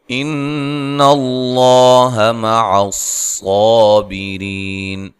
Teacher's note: नून मुशद्दद पे गुन्ना ज़रूरी है, लफ्ज़ अल्लाह को मोटा अदा करना है, सौद को मोटा अदा करना है और मद असली है, बी री या मद्दा है, रा को बारीक पढ़ना है, वक़फ़ की सूरत में मद कर सकते हैं।